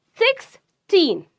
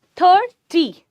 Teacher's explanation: for teen number, they stress the second syllable, while TY number stress the first.